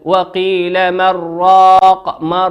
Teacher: في حالة الوصل نون ساكنة أتى بعدها حرف الراء، والراء من حروف الإدغام بغير غنة